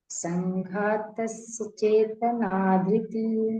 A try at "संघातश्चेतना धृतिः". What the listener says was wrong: शस क्यों बोल रहे हैं आप? संघातश चेतना। यहाँ पे आपको स आ रहा है। संघातश चेतना धृतिः। धृतिः विसर्ग है।